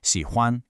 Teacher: We have that low, dipping third tone on 喜, and then it's followed by that high, flat first tone on 欢. 喜 欢. That tonal contrast is what gives the word that really nice melodic feel.